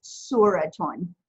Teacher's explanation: you put the nunation over it, you hear that ta sound, and you're hearing the un sound. So it becomes suraton.